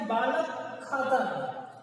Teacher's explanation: का और खा के बीच में थोड़ी सी हा जैसी आवाज आती है। पूर्ण रूप से हा की आवाज भी नहीं आती, लेकिन थोड़ा सा प्रतीत होता है कि हा जैसी आवाज यहाँ पर है। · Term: जिह्वा मूली